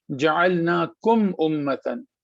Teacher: ہم یہاں پہ میم کو بالکل صحیح سے پڑھیں گے بغیر ناک میں روکے ہوئے اور آگے بڑھ جائیں گے